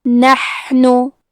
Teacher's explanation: حا کے ادائیگی حلق کے درمیان والے حصے سے ہے. کیونکہ یہاں حا ساکن ہے اور یہ حرف حروف الہمزہ میں سے ہے، تو ہم یہ کلمہ کو ایسے پڑھیں گے نحنو.